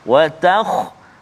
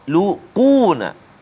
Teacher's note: Baik, antara kalimah yang perlu kita beri perhatian untuk kita sebut tebal atau nipis bacaan tu, iaitulah pada kalimah wa takhluquna. Huruf kha salah satu huruf isti'la, tapi dalam keadaan sukun sekarang ni jadi sebelum dia baris atas maka ada tebal sikit.